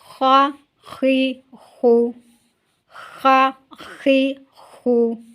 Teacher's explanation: اس کو پڑھنا ہے خا، موٹا بھی کرنا ہے، اونچا بھی کرنا ہے، تھوڑا سا وائبریٹ بھی ہونا چاہیے، لیکن اس کی جو آواز ہے، اس کا جو ساؤنڈ ہے وہ خا ہونا چاہیے، کھا یا خوا وغیرہ نہیں ہونا چاہیے۔